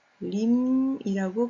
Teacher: 즉 달림의 니은을 리을로 발음하게 되는 것이죠. 즉 니은이 리을로 바뀌어서 소리가 납니다. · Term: 유음화